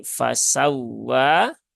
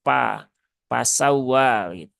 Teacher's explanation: huruf Fa dia tipis ya jadi pastikan dia ya diucapkan dengan tipis dan jangan sampai tertukar menjadi huruf P